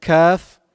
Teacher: have the word kafir the first letter is calf calf is pronounced using the back of the tongue touching the hard palate